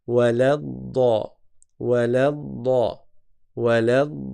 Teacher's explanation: on passe du lam avec fatha directement au dad